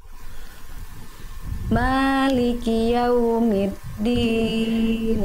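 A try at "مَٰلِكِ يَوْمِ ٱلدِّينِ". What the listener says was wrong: Sekali lagi maliat, jangan jangan jadi middin sama kayak tadi robbi, bukan robbi tapi robbi, ini juga sama middin, dal bukan tak. Maliki yaumiddin, middin jangan nah jangan tapi lagi Bunda.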